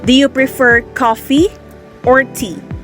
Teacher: Answer is rise fall intonation.